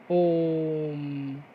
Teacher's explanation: और ओम इसमें 3 मात्रा का समय लगता है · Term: प्लुत स्वर